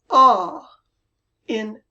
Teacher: in California, this ah is very open. Like if you go to the doctor to see your throat and he says, say, ah. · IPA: /ɒ/